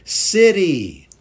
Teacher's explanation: Notice my T sounds a little bit like a D. City. You could say city, but I say city.